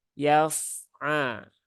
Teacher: huruf fa sukun. Nah, dia punya sifat rokhawah ya, mengalir.